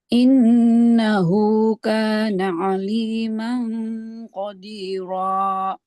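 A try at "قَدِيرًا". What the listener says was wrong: Jangan ada ininya, Bu. jangan ada hamzahnya ya. Qadira. Jangan ya. Qadira.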